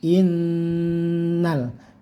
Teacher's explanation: nunnya di sini ada tasdidnya, didengungkan sekitar 3 harokat atau 1,5 alif